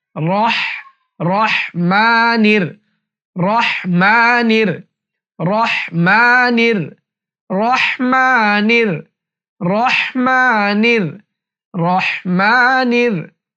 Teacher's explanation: বিসমিল্লাহির বিসমিল্লাহির এরপর রহ যখন বলবেন তখন রটা মোটা করতে হবে রহ অনেকে রাহমানির রাহিম বলে ভুল রহ সঠিক উচ্চারণ হচ্ছে রহ রহ রহমানির রহ হলকের মাঝখান থেকে রহ হাটা হলকের মাঝখান থেকে হবে